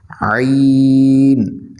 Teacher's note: حلق کے درمیان سے لفظ عین ادا ہوگا